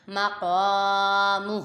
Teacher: میم زبر ما، قاف الف زبر قا، مقا، نیم پیش مو، مقام، ہا الٹا پیش ہو، مقامہ۔ میم متحرک، قاف پہ الف مدہ، پھر میم متحرک اور ہا پہ کھری حرکات، اور قاف کو پر پڑھیں گے